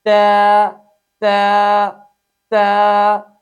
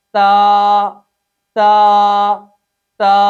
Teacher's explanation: اس حرف کو ٹیڑھا پڑھنا، اس کے اندر امالہ کرنا غلط ہے۔ اس حرف کو سیدھا ادا کرنا ہے